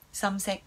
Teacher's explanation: Sumsek is the dark color. Both high tones there with the sun.